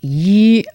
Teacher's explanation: Yi is 1 and it's a flat tone.